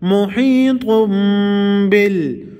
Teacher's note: د تنوین نون به په میم کې بدل شي او غنه به پکې کېږي دې ته اقلاب وایي.